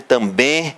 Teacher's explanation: o E vai ser ouvido aqui como nasal